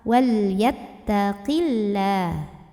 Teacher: Wal yattaqillah. Lam pada lafaz Allah, lam jalalah, kita bunyikan secara tarqiq. Kenapa? Karena kita lihat huruf sebelumnya.